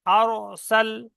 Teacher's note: কেমন পড়তে হবে, হামজা র জবর আর, সিন লাম জবর সাল, আর সাল। এখানে র পুর হচ্ছে, সেই জন্য মুখটা গোল হচ্ছে।